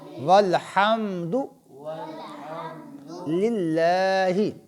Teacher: للہ کلام باریک ہوگا کیونکہ اس لام مشدد سے پہلے لام ہے، اس لام کے نیچے زیر ہے، لہذا یہ لام باریک ہوگا.